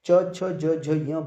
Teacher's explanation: जीभ जो हमारी है च छ ज झ ञ बोल के देखो, जीभ हमारी तालु से टकरा रही है हर वर्ड पे, तो च छ ज झ ञ का उच्चारण स्थान तालु हो गया।